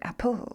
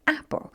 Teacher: this is the unstressed so we would scan it like that we go over the first syllable stressed over the second syllable unstressed